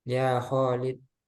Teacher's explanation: ketika memanggil Khalid, Khalid khoknya dua harokat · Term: mat tabi'i